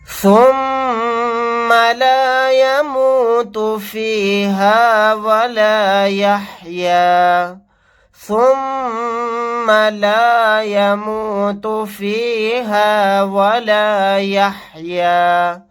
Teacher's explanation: میم کو پر تشدید ہے، یہاں پر غنہ کر کے پڑھیں گے